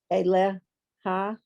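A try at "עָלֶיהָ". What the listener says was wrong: So under the ayin is a little t, so it's aleha.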